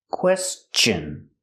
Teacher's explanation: So T-I-O-N is pronounced chun with the chicken sound.